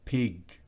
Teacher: Es importante que recuerde que la G al final, en inglés, es siempre oclusiva. No es como en español, sino total bloqueo.